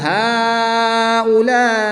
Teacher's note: الف مدہ کے بعد حمزہ اسی کلمے میں ہے تو یہاں پر مد متصل ہوگی. 3 سے 5 الف تک کھینچ کر پڑھیں گے.